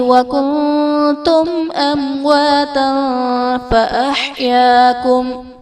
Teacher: نون ساکن کے بعد حروف اخفا میں سے تا ہے تو یہاں پر اخفا کا قاعدہ ہوگا، یعنی نون ساکن میں ہم غنہ کر کے پڑھیں گے